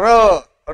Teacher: र हा कंपित वर्ण आहे आता र हा उच्चारताना र र उच्चार कंप होतो काय होतो